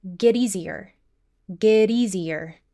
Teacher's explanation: we have consonant to vowel linking between get and easier, but, and this is important, the flap T is not limited to one word.